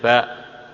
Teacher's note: kedua belah bibir ditekan akhirnya keluar dari baliknya